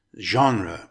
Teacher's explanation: The word genre is made up of two syllables. It's pronounced genre with the emphasis on the first syllable.